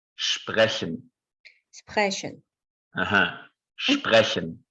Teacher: It's a little bit like the Spanish trilled R, like the re, but it's not produced with the tongue, but instead with this part of our throat, the upper part of the throat. It's called uvula.